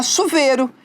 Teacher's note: no dia a dia a gente também acaba diminuindo né suprimindo esse izinho aí do ditongo